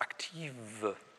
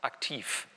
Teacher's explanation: Da ist eigentlich W stimmhaft. Aber wenn das im Wortauslaut, im Silbenauslaut steht, wird dann F draus